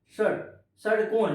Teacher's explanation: आपका जीभ और मूर्धा मतलब आपका जो मसूड़ा है ऊपर का वो आपस में सट जाता है